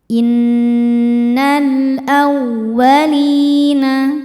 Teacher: Waw tasydid yang tidak didahului tanwin atau nun sukun jangan ditahan bacanya, cukup dibaca menggunakan naber. Naikkan intonasi suara kita.